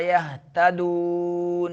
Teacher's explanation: مدہ ادا کرتے ہوئے ناک میں آواز نہیں نکالنی ہے